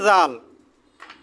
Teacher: জিহ্বার আগা তার বরাবর উপরের দাঁতের সাথে লাগিয়ে